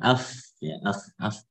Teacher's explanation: Dan fa itu ada di sufla syafah, yakni bibir bawah bagian dalam. Wa ma'a atrafi thanayil ulyah. Ya, maksudnya bertemu dengan ujung gigi seri atas.